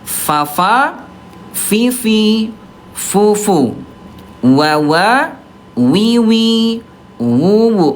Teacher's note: fa sama wawu dia rokhwah, dia lemah, suaranya mengalir